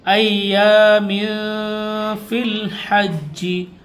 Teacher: یہاں پر غنہ کریں گے، اخفا ہوگا، تنوین کے بعد فا آ رہا ہے